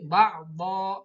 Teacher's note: Di sini ada do, berhenti karena ada waqaf, ada alif mati ya. Do-nya berharkat tanwin patah, fathataini, namanya tanwin patah, maka membacanya jangan ba'don tapi ba'do karena berhenti, ada waqaf.